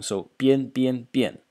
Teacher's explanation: Next character in the series, bian. in the fourth tone